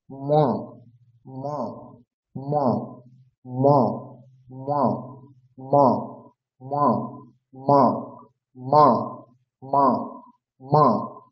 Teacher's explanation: এরপর হচ্ছে প বর্গ, প বর্গের উচ্চারণ স্থান ঠোঁট ওষ্ঠ, তাহলে ওষ্ঠ থেকে উচ্চারণ হবে, দুটি ওষ্ঠ পরস্পরকে স্পর্শ করবে, আর পঞ্চম বর্ণের উচ্চারণ করছি যেহেতু সেই জন্য নাক থেকে উচ্চারণ হবে